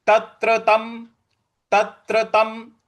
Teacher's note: त के ऊपर जो अनुस्वार है उसका हम म उच्चारण ले आएंगे